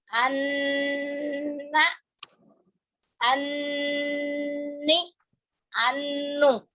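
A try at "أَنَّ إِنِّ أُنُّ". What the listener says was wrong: Kurang nahan. Mulut saya. Suara ibu. Ibu lihat mulut saya.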